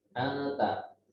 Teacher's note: Jadi memperdengarkan suara nunnya dibaca tipis.